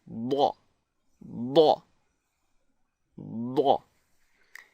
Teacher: So, for example, the Daad is pronounced when you place your tongue flat against the roof of your mouth and then push away from the roof of the mouth with the tongue while vibrating the vocal cords